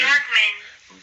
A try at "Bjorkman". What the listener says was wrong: Bjork. No, the J's like a Y. I know it's funny. Yeah, Bjork, like New York, Bjork. Bjork. Bjorkman.